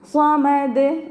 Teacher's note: സ്വ നമ്മൾ മഖ്റജിൽ നാവിനെ വെച്ചിട്ട് നാവിൻ്റെ ബാക്ക് ഭാഗം ഫുള്ളായിട്ട് മുകളിലേക്ക് പൊങ്ങി ഉച്ചരിക്കണം